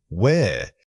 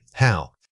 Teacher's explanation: Notice how where and how use the same rising tone. This is because both are asking for information that requires clarification from the listener.